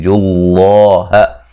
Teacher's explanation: لفظ اللہ کو موٹا ادا کریں گے، اس سے پہلے حرف پر پیش ہے